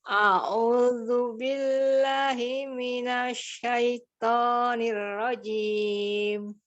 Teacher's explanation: Huruf to itu huruf tebal, ya. Pangkal lidah sedikit terangkat. Pangkal lidah itu lidah kita yang dekat dengan tenggorokan ibu, itu namanya pangkal lidah.